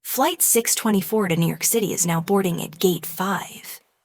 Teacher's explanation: Notice how to New York becomes ta New York, and how is now blends into is now.